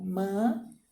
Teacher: Ela é paroxítona. Por quê? A sílaba tônica é a penúltima.